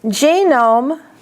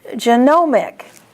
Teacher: So GE is the accent in the first word, and NOM is the accent in the second word.